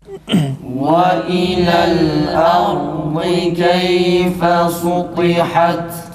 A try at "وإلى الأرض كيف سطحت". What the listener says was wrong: Sultiha değil arkadaşlar. Sin, sad gibi çıkmasın.